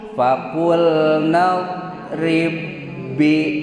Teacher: dua huruf nu sami bari nu kahiji disukunkeun namina teh idgham mutamatsilen shogir pangna disebat idgham pedah asub pangna disebat mutamasilen peda hurufna sami pangna disebat shogir peda huruf nu kahijina disukunkeun.